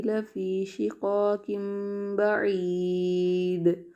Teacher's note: وقف میں دال کی جو زیر کی تنوین ہے وہ ساکن میں بدل جائے گی